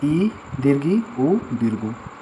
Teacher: संवृत स्वर, इसमें मुंह बंद होता है